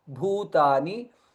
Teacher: Bha is mahaprana and ukara dirgha.